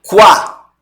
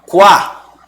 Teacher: Então, você sabe que o U é o som fraco e o A é o som forte. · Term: semivogal